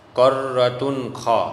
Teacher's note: तो दो पेश की तनवीन के बाद हरूफ हल्की के 6 हरूफ हमज़ा हा, आइन हा, गैन ख में से ख आया, इसलिए इजहार होगा, और इजहार में गुन्ना होता नहीं है, तो यहाँ बगैर गुन्ना के ज़ाहिर करके पढ़ेंगे